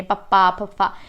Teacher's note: ਤਾਂ ਇਹ ਕਿਹੜੇ ਵਿਅੰਜਨ ਹੋ ਗਏ? ਫਿਰ ਹੋਂਠੀ, ਸਾਡੇ ਹੋਂਠਾਂ ਦਾ ਆਪਸ ਵਿੱਚ ਮੇਲ ਹੁੰਦਾ, ਹੋਂਠ ਆਪਸ ਵਿੱਚ ਜੁੜਦੇ ਨੇ।